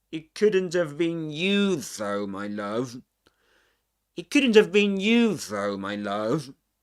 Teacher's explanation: he points out that we stress the word couldn't also